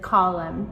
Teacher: we hear the m sound, but not the n. And it's the same thing with column, too. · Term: silent m